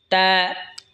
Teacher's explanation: এরপর এটা হলো তা। তা জিহ্বার আগা সামনের ওপরের দুই দাঁতের গোড়ার সঙ্গে লাগা উচ্চারণ হবে তা।